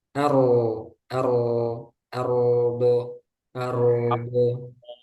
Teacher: roknya jangan sampai seperti mantul ya. Arodo, arodo, jangan dilepas tapi tetap ngalir.